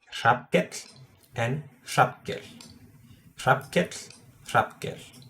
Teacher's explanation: when you have two L's, it's the same, but you have like an invisible T before it